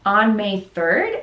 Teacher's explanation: On May 3rd, again, the intonation is going up because we're kind of asking for information here. And May 3rd is stressed because this is the most important key word in the sentence